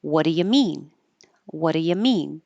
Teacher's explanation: the stress is on the the question word what and the thing you're asking about mean · is low and your tongue pulled back uh as in up so all of those vowels just change to uh